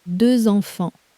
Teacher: There it is again, the Z between the words. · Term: liaison